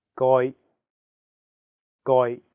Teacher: the second character is in a high flat tone first tone